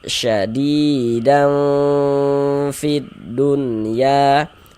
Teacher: Huruf fauk pada ikhfa hakiki ausat. Ah, jadi kita baca samar disertai dengan dengungan, disertai dengan ghunah